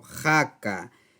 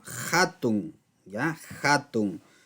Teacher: el h es reemplazado por el sonido j ahí está se pronuncia en este caso ja